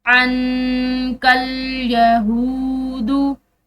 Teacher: तर्वा अनकल यहूदु, अन, यहाँ पर भी नून साकिन के बाद काफ हरूफ इख्फा में से है, तो यहाँ पर नून साकिन पर जो है यहाँ पर भी इख्फा होगा।